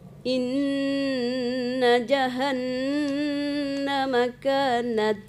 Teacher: mematikan ta itu ada hamasnya ya